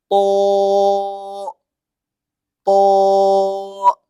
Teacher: त में भी वही सेम मखरज है जो कि ता में है। बस फर्क इतना है कि थोड़ा मोटा होगा